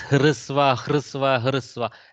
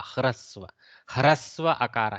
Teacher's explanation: I keep saying hrisva, hrisva, hrisva. It is not hakara with swara. It is hakara with repa vyanjana. Okay, so it is a repa akara, hrasva. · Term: hakara repa